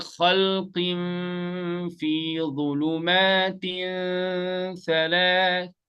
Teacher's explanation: You're actually in the middle. You're hiding the noon sakin, but at the same time you're going in gunna. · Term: ikhfa